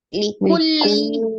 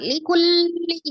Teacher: Likulli, ya lanjut, ada lam tasdid. Likulli, sifatnya dia tawassut ya, atau baini ya, lamnya dialirkan tuh. Likulli, jangan likulli, jangan ditahan, atau juga jangan dilepas langsung likulli gitu, jangan ya.